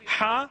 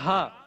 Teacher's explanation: ہا middle part of the throat سے ہم ادا کرتے ہیں جبکہ ہا lower part of the throat اور upper part of the lungs یعنی سینے کے اوپری سطح سے یا پھر اپنے حلق کی